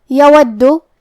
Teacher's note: کلمت یودو یہاں یا پہ اور واو پہ دونوں پہ زبر ہے تو ہم یہ دونوں زبر کو ظاہر کریں گے کیونکہ دال پہ تشدید ہے لہذا 2 حرف کے برابر دال کو پڑھنا ہے